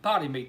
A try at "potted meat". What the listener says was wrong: Potted meat. It sounded like you said potty meat.